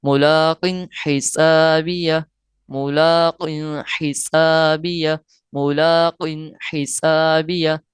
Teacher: ہم نے غنہ نہیں کرنا، ظاہر کر کے پڑھنا ہے